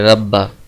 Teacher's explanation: اب ہم جو 2 حرف ہیں با اور با، ان میں سے پہلے کو ساکن کر کے دوسرے میں ادغام کر کے پڑھیں گے ربا، ان دونوں کو ہم ایک ہی با پڑھیں گے اور اس پر شد پڑھیں گے، زور دے کر پڑھیں گے